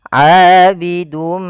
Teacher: kita masukkan tanwinnya kepada huruf mim, kemudian ditahan. Abidum ma, tahan ma, baru dilepas. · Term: idgham bighunah, idgham bi gunnah